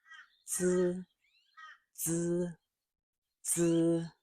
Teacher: Many learners see Z and they think of the English Z or Z, but Mandarin Z or Z is not the English buzzing Z in zoo. It is tighter, shorter, and more like a quick Z sound.